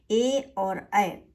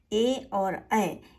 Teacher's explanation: तो कंठ और तालू से होते हैं ए और ऐ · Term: कंठ तालू